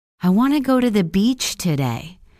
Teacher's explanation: Notice how I stress the words want, go, and beach. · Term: content words